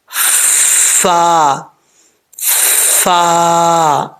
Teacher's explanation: اوپر والے دانتوں کا نیچے والا کنارہ، نیچے والے جو ہونٹ ہیں ان کی تری والی جگہ پہ ملے گا، لگے گا، تو یہ فا پڑھا جائے گا، فا، فا، ٹھیک ہے؟